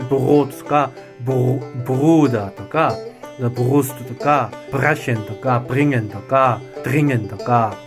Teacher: まず最初。AmWortoderSilbenanfangwieinRoseoderhörendieOhrenderAmerika。単語の始め、あるいは音節の始めに出てくるときには子音的に発音されますよと。で、nachkurzemVokalwieinHerr。単母音の後に出てくるときには子音的に発音されますよと。nachlangemVokalwieinOhr。で、長母音の後のRはvokalisch。母音的に発音されますよと。nachKonsonantwieinBrot。 子音の後のRは子音的に発音されますよと